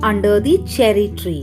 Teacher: this is a phrase that features assonance with a repetition of the long e vowel